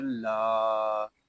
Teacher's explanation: لام الف زبر لا، لام کو ہم ایک الف تک کھینچ کر پڑھیں گے